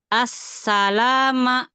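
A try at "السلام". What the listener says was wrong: La jangan ada mat. As-salama.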